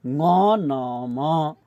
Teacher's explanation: फोक्सोबाट बाहिर आएको सास नाकै ओडारबाट बाहिर निस्किँदा उच्चारण हुने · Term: नासिक्य